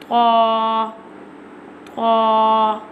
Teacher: pronounce from the tip of the tongue touching the roots of the top two front teeth